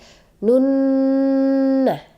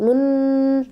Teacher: Nun bertasdid atau mim bertasdid itu disebut dengan ghunnah jadi teman-teman harus dengungkan gitu Ya dengungkan selama dua atau tiga harakat jadi bacanya kayak gini ya Nun atau kalau dua harakat Nun